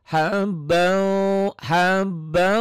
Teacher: nyamber dan dobel tapi karena wau ini bagian dari Idam bigunah harus ditambahin ada ditahannya ditahan dan ada dengung ke hidungnya karena ini idgam bunah idgam itu nyamber nyamber melebur ya dilebur